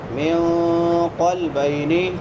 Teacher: نون ساکن ہے بعد میں حروف اخفاء میں سے قاف ہے تو یہاں پہ اخفاء کریں گے